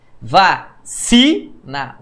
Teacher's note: Vacina. O si é o mais forte. É uma paroxítona. Sílaba tônica é a penúltima.